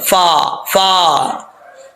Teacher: اوپر والے جو 2 دانت ہیں ان کا کنارہ نیچے والے ہونٹوں کی تری والی جگہ پہ لگے تو فا پڑھا جائے گا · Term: فا کا مخرج